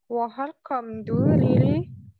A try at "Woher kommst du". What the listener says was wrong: Kommst du. ST-nya kurang kedengar. Coba diulang.